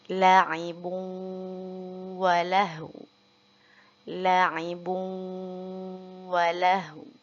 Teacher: Jadi jangan lupa bibirnya tetap mencucu atau monyong ke depan untuk mengisyaratkan adanya huruf wawu setelah huruf ha yang berharokat sukun